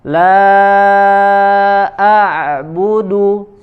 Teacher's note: kita latih terus huruf ain tidak masuk ke dalam rongga hidung, ya, karena huruf ain keluar tempatnya dari wasatul halq, ya, dari tenggorokan sama seperti huruf H ya, sehingga tidak mengeluarkan suara dari rongga hidung.